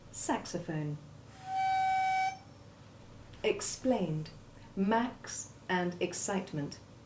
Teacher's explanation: The X1 sound is made up of the hard C or K sound followed by soft S1, as in saxophone.